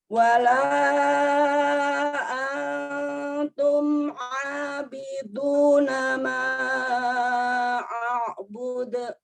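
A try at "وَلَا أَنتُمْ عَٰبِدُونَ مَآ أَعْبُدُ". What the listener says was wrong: Iya, Masya Allah. Tapi tadi itu masih kedengar angnya, ada angnya.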